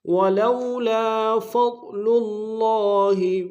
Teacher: ضاد کو موٹا ادا کریں گے